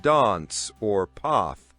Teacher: In British English, it's often a longer a sound like dance or path. In American English, it's usually a shorter a sound like dance or path.